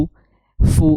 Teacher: karena dia domah maka dia harus diucapkan dengan cara mencucu